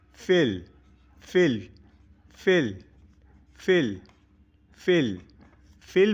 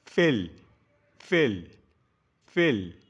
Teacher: কেল কেল কেল কেল কেল কেল বিল বিল বিল বিল বিল টেল টেল টেল টেল টেল ফেল ফেল ফেল ফেল ফেল ফেল বলাতে আমার ওপরের দাঁতটা নিচের ঠোঁটে টাচ করবে। ফেল, ওপরের দাঁতের পাটি নিচের ঠোঁটে টাচ করবে।